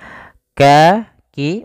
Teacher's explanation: makhraj huruf kaf itu kan dipangkal lidah mendekati huruf qof